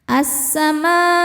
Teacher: Hamzahnya u ada pada kata assamau. Maka mimnya panjang boleh empat boleh lima harakat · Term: mad wajib muttasil